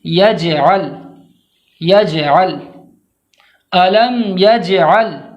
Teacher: جیم کو جب ہم ادا کریں گے تو قلقلہ کے ساتھ، یعنی اس طرح سے پڑھیں گے کہ اس کی آواز دوبارہ لوٹتی ہوئی معلوم ہونی چاہیے